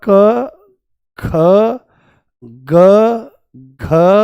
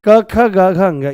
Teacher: ये क वर्ग में ये कंठ्य हो जाते हैं